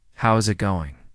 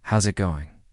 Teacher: The is disappears and the final G in going often softens. This is called connected speech.